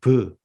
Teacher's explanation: 그러나 강점이 브가드 크파트 이렇게 강점이 들어가면 이것은 브 우리의 비읍에 해당되죠. 입술을 붙였다 띨 때 터지면서 나오는 소리